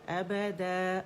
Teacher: الف مدہ ان 2 کاؤنٹس ہم اسے کھینچیں گے. ابدا، اور آواز اوپر جائے گی، د کر کے امالا کر کے نہیں پڑھیں گے.